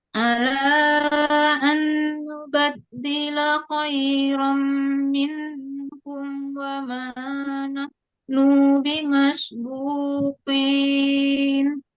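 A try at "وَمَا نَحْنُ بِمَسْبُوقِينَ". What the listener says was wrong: Ya, nu-nya nggak boleh tertahan. Wa ma nahnu bimasbuqin.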